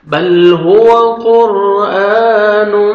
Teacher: ادغام کریں گے غنہ کے ساتھ بل ہوا قرآن نوز میں ساؤنڈ لے کے جائیں گے